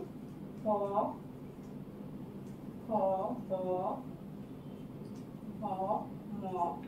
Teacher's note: এই 5টি বর্ণ ওষ্ঠের সহিত অধর, আগের দিন বলে দিয়েছিলাম ওষ্ঠের সহিত অধর মানে ওপরের ঠোঁটের সাথে নিচের ঠোঁট। ওষ্ঠের সহিত অধরের স্পর্শে এই ধ্বনিগুলো উচ্চারণ হয়, এই জন্য এগুলিকে বলে ওষ্ঠবর্ণ।